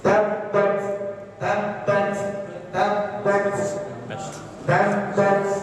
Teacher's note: Tabbat yada, jadi ada hamzahnya tapi sedikit.